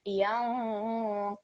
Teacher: the light nasal sound will be created when we join the ya mushaddad with the noon. So that will be yanqalib. · Qaf again over here will be thick, and we have another example of our qalqala rule where we have the ba sakin, which will be vibrated, or a jerking sound will be produced.